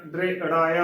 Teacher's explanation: ਦਦੇ ਦੇ ਪੈਰ ਚ ਰਾਰਾ ਇਸ ਨੂੰ ਪੂਰਾ ਨਹੀਂ ਬੋਲਣਾ